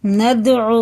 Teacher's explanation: یہ دال میں کیا قلقلہ ہے، اسے سخت پڑھتے ہیں، اس کے مخرج ٹکر کھا کے الگ ہو جاتے ہیں